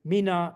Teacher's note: you get only the last syllable is high